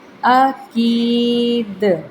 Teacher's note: نمایاں پڑھا جائے گا کیونکہ وہ دال قلقلہ والے حروف میں سے ہے